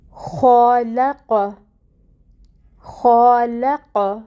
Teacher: جب بھی خ کہیں پہ آئے تو اس کو ہمیشہ پر ہی پڑھنا ہے، حرکت کوئی بھی ہو لیکن اس کی ادائیگی موٹا کر کے ہی کی جائے گی۔